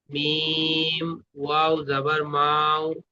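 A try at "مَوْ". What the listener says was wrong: জি মাও টান হয়ে যাচ্ছে, টান হবে না, তাড়াতাড়ি পড়তে হবে, অলিনের পড়াকে তাড়াতাড়ি পড়তে হবে, মাও।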